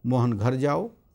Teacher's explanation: वाक्य में यदि घर शब्द पर बल दिया गया है तो इसका अर्थ हुआ घर ही जाओ, कहीं और नहीं।